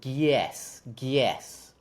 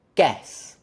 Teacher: it sounds like I'm adding a y in between the g and the eh. Like g, y, eh.